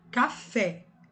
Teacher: Fé é a sílaba mais forte, é a tônica e o K é a átona. Por isso que é oxítona, a última é a tônica. Lembrando que não necessariamente precisa ser acentuada.